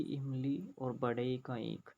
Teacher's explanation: इन दोनों का उच्चारण स्थान होता है तालु यानी कि तालव्य